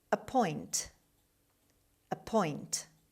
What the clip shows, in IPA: əˈpɔɪnt